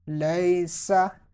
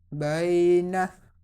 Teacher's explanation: waw leen and ya leen will be pronounced without stretching and without sudden pausing